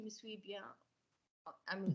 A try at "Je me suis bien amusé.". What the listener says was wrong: Smaller mouth. Smaller mouth. Smaller mouth.